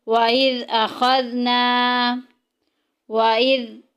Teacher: زال میں سٹی نہیں ہوگی کیونکہ زال سٹی والا نہیں ہے۔ جب ہم نے زال کو ادا کرنا ہے تو زبان کا سرا جو ہے وہ اوپر کے دانتوں کے اندرونی کنارے سے لگانا ہے، جو سامنے والے اوپر کے دونوں دانت ہیں ان کے اندر والی سائڈ پہ لگانا ہے۔